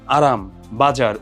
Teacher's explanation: যেমন আরাম বাজার জিওভার অগ্রভাগটা কি হচ্ছে অগ্রভাগটা কম্পিত হচ্ছে এবং দন্তমূলের যেই অংশটা সেই জায়গাটাতে হচ্ছে একাধিকবার খুব ফাস্ট স্পর্শ হচ্ছে এইজন্য হচ্ছে আমরা এটাকে বলছি কম্পন জাত ধ্বনি খুব দ্রুত আঘাত